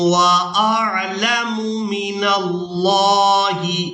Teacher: لفظ اللہ کے لام کو پورا ادا کریں گے کیونکہ اس سے پہلے والے حرف پر زبر ہے